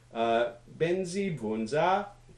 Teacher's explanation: benzi bunza, is high, high, low, high